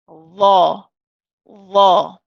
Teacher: fatah we pronounce this as law law so you notice that the tongue is not pressed hard against the teeth okay it's not pressing hard but it gently touches the teeth and it pushes away